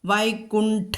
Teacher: വൈകുണ്ഠ ഠ എന്നുള്ളത് കടുപ്പിക്കണം. അവിടെ അതിഖരമാണ് ഠ, രണ്ടാമത്തെ ടവർഗത്തിലെ 2ാമത്തെ അക്ഷരം.